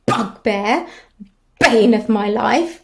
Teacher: we're getting quite negative again with those bilabial plosives